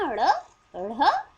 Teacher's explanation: हमारी जबान आप महसूस करिए बोल करके गोल हो जाती है और तालू के आगे वाले भाग के साथ एक झटके के साथ टच करके खुल जाती है